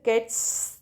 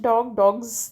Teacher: But here cats, that's a S sound. But in plural of dogs, that's a Z sound.